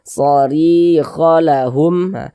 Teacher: Sebelum ya sukun ada harokat kasrah, maka huruf yang memiliki harokat kasrah ini dibaca panjang. Sehingga ri dibaca panjang. Mad tabi'i panjang 2 harokat.